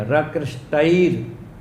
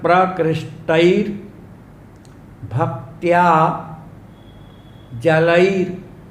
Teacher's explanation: रकृष्टई के बाद आधा र और बोलना पड़ेगा, रकृष्टैर, क्योंकि भक्त्या के ऊपर रेफ है, भा के ऊपर।